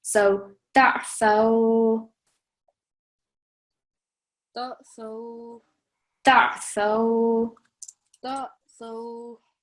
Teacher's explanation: If they were together, you really want to make sure that your voice is distinct when you pronounce the ayn sound. So ayn is coming from the middle of your throat.